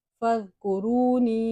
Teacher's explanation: یہ واو مدہ ہے، اس کو ایک الف کی مقدار کھینچ کے لمبا کر کے پڑھنا ہے